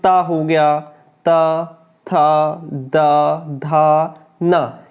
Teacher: जब दांत और जीभ आपस में टच होते हैं तब ये वर्ण हमारे मुख से निकलते हैं। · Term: दंत्य